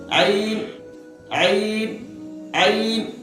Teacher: इब्तिदाई हल्क का मतलब हुआ कि शुरू वाला हल्क, इंतहाई हल्क का मतलब हुआ आखिर वाला हल्क, औसते हल्क का मतलब हुआ वस्ते हल्क का ही, वस्ते हल्क का मतलब हुआ बीच वाला। तो ऐन जो निकलेगा ये वस्ते हल्क से निकलेगा, यानी कट के बीच से, हल्क के बीच वाले हिस्से से